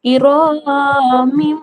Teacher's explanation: দুজের মিম। এখানেও তানবিনের পরে ইকলাবের অক্ষর বা এসেছে, তাই এখানে তানবিনকে মিম দ্বারা পরিবর্তন করে এক আলিফ পরিমাণ গুণনা সহ পড়তে হবে